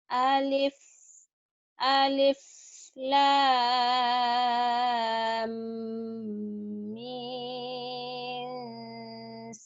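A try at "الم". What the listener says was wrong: Jangan min. Mim atuh. Mimnya. M ujungnya kan mim. Ujungnya M.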